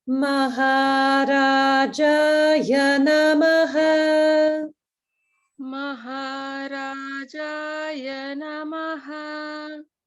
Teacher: the accurate swaras, the Maha and Ra are down. Ja is middle. Ya goes back down.